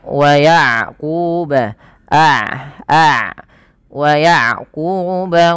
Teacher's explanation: Maaf kebalik syiddah itu tertahannya suara rohhawa itu mengalirnya suara sehingga ketika melafalkan Ain tidak terlalu dialirkan dan tidak terlalu ditahan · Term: sifat bainiah, sifat bainiyah